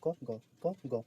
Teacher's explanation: मुख से कम हवा निकल रही इसलिए अल्प प्राण